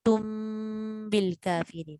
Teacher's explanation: Asalnya muhitun, tapi tak bunyi tun, dia jadi tum bil kafirin. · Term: tanwin iqlab